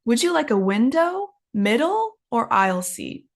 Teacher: when we have three options in a sentence so the first two up up and the last one is always down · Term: up up down